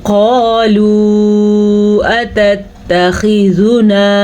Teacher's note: قالوا قاف کو پر پڑھنا ہے اور قاف موٹی بھی ہے اور ساتھ الف مدہ ہے. الف سے پہلے حرف پہ زبر ہو تو الف مدہ بن جاتا ہے، ٹھیک ہے.